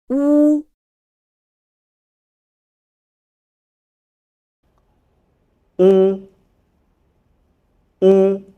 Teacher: 乌、 乌， 乌， When pronouncing this sound, the lips are rounded and protruded into a small hole. The back part of the tongue is raised, and the vocal cords vibrate.